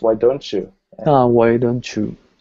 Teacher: you're gonna end up with this chu sound here